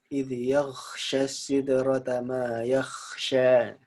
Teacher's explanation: Jadi ghainnya nggak nyampe, akhirnya keluarnya huruf kha